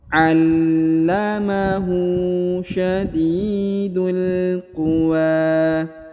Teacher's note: Huruf wa dipanjangkan 2 harokat ya, karena di atasnya terdapat tanda alif kecil dan di depannya terdapat alif bengkok atau alif maksurah.